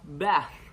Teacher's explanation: The initial sound of thin and the final sound of bath are both voiceless dentals.